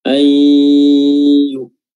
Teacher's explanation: Di sini hukumnya adalah idgham bi gunnah ya, idgham artinya memasukkan huruf nunnya, kita masukkan ke huruf ya bi gunnah disertai dengan dengung gunnah